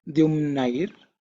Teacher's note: third dha, okay, it's not aspirated